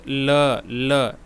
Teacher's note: तो कौन सा नहीं है दोस्तों, बोल के देखिए, ल। ये जिह्वा जो हमारा है ये दांत से टकरा रहा है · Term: दंत्य